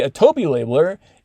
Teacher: that little continuation rise like when you say a toby labeler it feels like you know there's something else you want to say beyond that